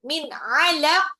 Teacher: nun sukun ketemu ain itu izhar ya. Jadi nggak boleh ditahan min. Langsung, min 'alaq, qafnya pantul.